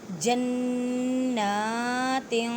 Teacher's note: 2 زبر 2 زیر 2 پیش کو، اور اس کے بعد تا ہے اور تا حروف اخفا میں سے ہے۔ جنات، نون مشدد ہے، غنہ کریں، نون کو ایک الف کی مقدار میں کھینچ کے پڑھیں